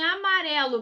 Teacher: em amarelo, pessoal, qual é a sílaba tônica? É o ré. Então, se é o ré, última, penúltima, é uma paroxítona.